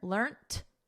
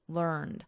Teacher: we have a soft T here, learnt. And then in American, learned with a soft D, learned.